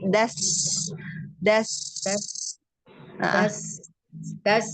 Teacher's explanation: Nah, sinnya hati-hati Bunda. Sin itu sin di ujung lidah bertemu dengan gigi